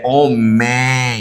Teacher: a presença desse último M nasaliza o E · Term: nasalizado